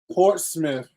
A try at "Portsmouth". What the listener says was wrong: There's no ITH in that. I keep telling y'all this. I tell the people at my job every day, Portsmouth. And I'm going to keep saying it. Norfolk, Suffolk.